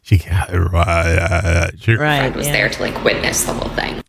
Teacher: this is just like a real world example of someone who did a vocal fry